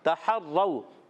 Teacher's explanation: تحروا، تا پر زبر ہے، ہا پر زبر ہے، ہا حلق کے درمیان والے حصے سے ادا ہوتا ہے. را مشدد، ذرا رک کر ادا کریں.